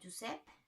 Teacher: En la paraula Josep, la E és una vocal oberta